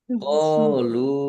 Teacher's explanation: qolu mausul q fathah alif mad thobi'i panjang dua harakat